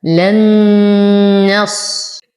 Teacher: نون ساكنة وبعدها نون متحركة، فالحكم إدغام مع غنة كاملة. لن نصبر على الصاد ونعطيه التفخيم.